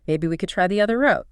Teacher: That slight rise makes the suggestion sound less like a command and more collaborative, more open to discussion.